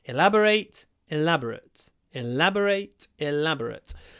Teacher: The stress stays on the second syllable, but the final syllable changes.